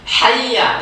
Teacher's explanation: Hayya, jadi iyanya di situ kan tidak terlalu lama, tidak dengung di sana.